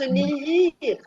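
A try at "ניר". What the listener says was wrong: Non, non, on prononce nir, tout court. Nir. On prononce N-I-R. ce qu'on appelle un yod pleinement écrit. Un hirik pleinement écrit.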